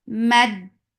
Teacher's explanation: For fatha upon jaws attached with dal. Dal gets sifa of shidda. There is no flow of sound. The sound will cut off abruptly.